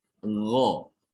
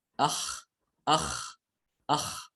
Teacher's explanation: Kalau goin dia itu sifatnya dia jahar, adapun kho dia hamas. Ketika mengucapkan huruf goin, getarannya kuat sekali di tenggorokan ya.